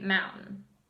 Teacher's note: the T is dropped in the medial position